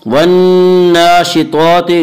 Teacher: نون مشدد غنہ ہوگا، غنہ کی مقدار 1 الف ہے۔ والناشطات نون کے اوپر کھڑا زبر ہے، کھڑا زبر کو 1 الف کے برابر کھینچ کر پڑھیں گے۔